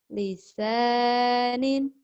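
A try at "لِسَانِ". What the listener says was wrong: Lisani. Jangan ada ninnya. Lisani.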